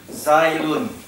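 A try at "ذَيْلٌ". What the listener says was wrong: There's no Zayd, brother. That is a Zayl. Zaylun.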